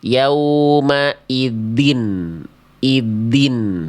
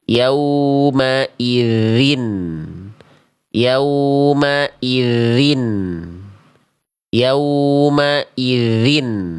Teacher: Ah, ini bacaan yang salah ya gitu. Walaupun makhrajnya sudah tepat ya, tapi sifatnya belum tepat. Suara huruf dalalnya mampet. Yaumaiddin iddin yang seharusnya suaranya mengalir.